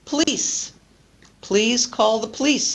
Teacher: this is another example of deletion unstressed vowels with n l p t or R